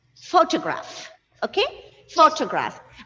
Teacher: so here the syllable stress for the first word is on the first syllable